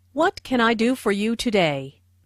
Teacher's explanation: Notice that this question starts with what, so the intonation drops at the end of the question.